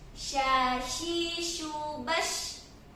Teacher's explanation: shin ini dia memiliki tafashin ya. Ada menyebarnya udara di mulut.